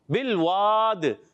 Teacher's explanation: آخر میں دال میں قلقلہ بھی کریں گے. قلقلہ کے ساتھ ایک قاعدہ ہوتا ہے مد عارض، وہ بھی ہوگا.